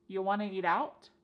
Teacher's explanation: And then we have reduced want to become wanna.